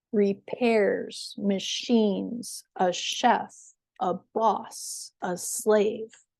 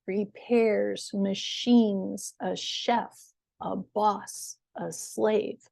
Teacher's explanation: So notice that that first syllable is shorter. The second syllable of these words is higher, longer, and louder in pitch. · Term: stress